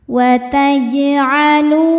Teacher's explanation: Kemudian berikutnya ada hukum qalqalah sughra. Karena ada huruf qalqalah yaitu jim di tengah-tengah bacaan ya. Dan sukunnya ini sukun asli, maka dipantulkan dengan pantulan yang kecil.